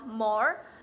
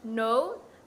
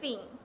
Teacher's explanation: dihasilkan dengan aliran udara yang melewati rongga hidung seperti contoh bunyi suara m n dan Eng contohnya pada m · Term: nasal